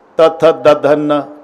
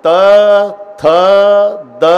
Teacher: प्रत्येक वेळेला आतून धक्का मारते ना जीभ दाताला दाताला धक्का दिल्याशिवाय ही लाईनच होत नाही त थ द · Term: दंत्य